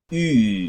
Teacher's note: es la I que usted y yo sabemos del español, pero con los labios redondos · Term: I larga, redonda